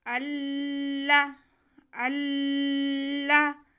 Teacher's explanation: آگے لام مشدد ہے، ہم زبر کو لام کے ساتھ ملائیں گے تھوڑا رک کے۔